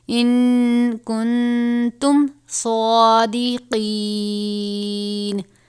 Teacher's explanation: سواد کو پر پڑھا جائے گا